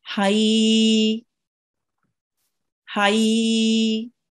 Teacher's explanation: with yalin, we join it and we prolong it for 2 seconds, for a bit longer than 1 second, about 2 seconds.